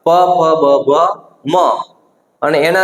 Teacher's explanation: બે હોઠ ભેગા થવાથી જે ઉચ્ચારાતા હોય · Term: ઓષ્ઠ્ય વ્યંજનો